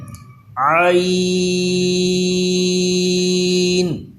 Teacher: عین نہیں ہونا چاہیے بلکہ عی ایسے آواز آنی چاہیے، اور لمبا کر کے پڑھیں گے اور حلق کے درمیان میں سے اس کی آواز نکالیں گے